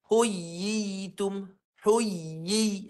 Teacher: Dua ya ni jadi dia tak tetap bunyi mad tu sebab ya tu diidghamkan.